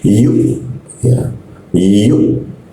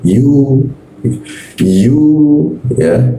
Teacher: Nah pada huruf ee wau ya bertemu wau terus di atasnya ada hamzah dimatikan. Ketika ada huruf ee hamzah dimatikan, maka cara membacanya adalah ee mentok ya.